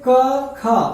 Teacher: जब कहते हैं क और ख, तो कंपित नहीं होता हमारा गला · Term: अघोष